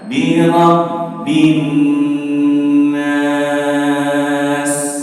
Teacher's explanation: Kalau sama, mirabbinnas, [bernyanyi] ini ba dan nun persis sama kadarnya. Tapi, nun karena punya sifat ghunnah, maka dia ditahan lebih lama daripada huruf ba. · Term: gunnah